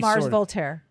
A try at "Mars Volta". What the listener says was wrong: Volta. No, there's no R on the end. Volta. It's not Mars Voltaire. It's Mars Volta, New Haven.